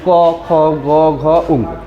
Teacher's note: আমাদের কন্ঠ থেকে যেগুলো উচ্চারিত হয় সেগুলাকে বলায় কন্ঠধ্বনি।